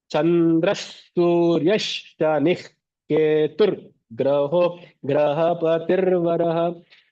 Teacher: that Ha becomes very guttural